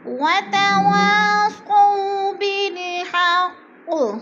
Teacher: حق پہ قلقلہ ہو رہا ہے اور قاف مشدد ہے، سختی سے پڑھیں گے۔